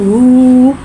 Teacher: उल्टे पेश को होठों की गुलाई के साथ अदा करके पढ़ेंगे और उल्टे पेश को एक अलिफ यानी 2 हरकत के बराबर खींच के पढ़ेंगे।